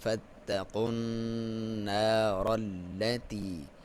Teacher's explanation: واو کو ہونٹوں کی گولائی کے ساتھ پڑھیں گے